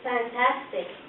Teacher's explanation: what is the F sound like when you say fantastic no vibration right feel nothing